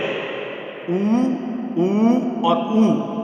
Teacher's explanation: उस उच्चारण में एकमात्रिकता, द्विमात्रिकता और त्रिमात्रिकता का स्पष्ट उल्लेख हो जाता है, स्पष्ट जो है ज्ञान हो जाता है।